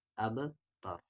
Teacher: یہاں پر با ساکن ہے، یعنی یہاں پر قلقلہ ہوگا، اور یہ را ہیوی پڑھا جائے گا کیونکہ اس را کی آواز اوپر کی طرف جا رہی ہے